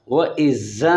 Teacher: ذال کو زا نہیں پڑھنا ہے، ذال کو نرمی کے ساتھ ادا کرنا ہے. وَإِذَا قِيلَ یعنی کیلا نہ ہو، کاف نہ ہو، کتاب والی کاف نہ ہو، موٹی قوف زبان کی جڑ اوپر کے تالو سے ٹکر کھائے.